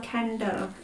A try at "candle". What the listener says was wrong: It sounds like you're saying Kendall, like Kendall Jenner.